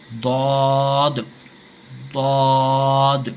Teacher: اس کا مخرج جو ہے زبان کی کروٹ لیفٹ سائڈ کی داڑھ پر رگڑتے ہوئے آگے جا کر ٹچ ہوتی ہے، ضاد، ضاد، زبان کی جو کروٹ ہے لیفٹ سائڈ کی وہ داڑھ پر، اوپر کی داڑھ پر لگ کر رگڑتے ہوئے آگے جا کر ٹچ ہوتی ہے، تب جا کر ضاد، ضاد، اس طریقے سے ادا ہوتا ہے۔